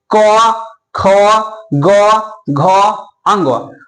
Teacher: उच्चारण स्थान होता है क्या होता है कंठ होता है देखिए अगर आप क वर्ग उच्चारण करते हैं तो क्या होता है कंट से बोलते हैं